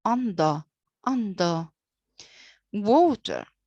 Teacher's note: the first part is stressed while the second and the final part is unstressed